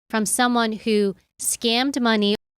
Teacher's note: She puts a short pause after who, building some tension again.